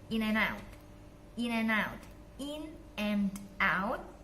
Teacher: D-nya dihilangkan jadi in and out